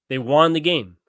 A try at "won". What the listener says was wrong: They won the game. You said that they won. You pronounce it Juan, like the name Juan.